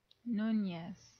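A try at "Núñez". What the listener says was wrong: And pronounce the second N like it's a Y. Pretend like it's a Y. Nunez.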